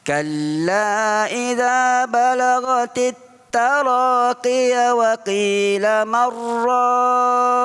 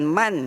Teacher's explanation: Bukan man, dia marraq. Sebab nun mati bertemu dengan ra, hukum dia idgham. Idgham tu maksudnya memasukkan terus pada huruf ra.